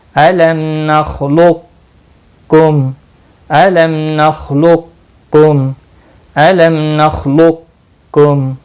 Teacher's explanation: یعنی قاف موٹا پڑھا جائے گا بغیر قلقلہ کے، پھر اپنی حرکت کے ساتھ اگلا باریک کا پڑھا جائے گا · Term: ادغام ناقص